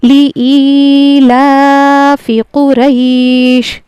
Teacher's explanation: یہاں پہ لام کو جلدی پڑھنا ہے اور حمزہ یا زیر ای کو کھینچ کے پڑھنا ہے